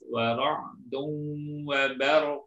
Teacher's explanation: Ra-nya tetap jelas, kemudian qaf-nya juga jelas, termasuk qalqalahnya